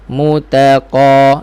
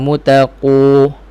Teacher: Mu muncung, ta tak muncung, qa pun tak. Mutaqa. Jangan mutaqu.